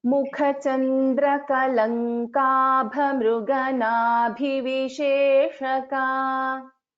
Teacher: kha is a mahaprana, bha is a mahaprana. Again in this nabhi, bhi is a mahaprana. Those you need to put little more stress.